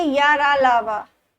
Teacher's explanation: या का उच्चारण तालु से, रा का उच्चारण मूर्धा से, ला का उच्चारण दंत से, वा का दंतोष्ठ से। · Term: अंतस्थ व्यंजन